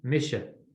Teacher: So M-I, mi, S-E, sh. S is pronounced like SH in Irish the vast majority of the time.